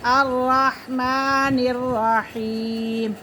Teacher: را مشدد ہے، مشدد حرف اپنے پہلے والے حرف کے ساتھ مل کر پڑھا جاتا ہے، اور یا ساکن سے پہلے زیر ہے تو یہ یا مدہ ہے۔